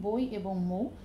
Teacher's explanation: পাশাপাশি ব্যবহৃত হয় দূরে থাকলে হবে না একদম কাছাকাছি থাকতে হবে প্রথম স্বরধ্বনি দ্বিতীয় স্বরধ্বনির তুলনায় দীর্ঘ এবং স্পষ্ট · তার মানে দুটো পাশাপাশি স্বর যখন এক একই সঙ্গে উচ্চারিত হবে সেই ধ্বনিগুলোকে বলা হবে যৌগিক বা দ্বিস্বর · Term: দ্বিস্বর ধ্বনি